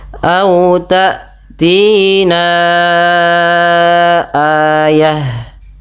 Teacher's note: Panjangkan bunyi suara na sepanjang empat atau lima harakat. [berdehem] Karena pada lafal ini terdapat hukum tajwid berupa bacaan mad jaiz munfasil.